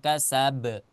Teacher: Maka qalqalahnya dibaca kubro. Rada kuat. Ma aghna anhu maluhu wa ma kasab. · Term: qalqalah kubro